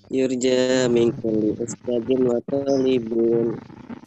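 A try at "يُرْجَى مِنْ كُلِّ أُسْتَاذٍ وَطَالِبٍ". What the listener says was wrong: Benar.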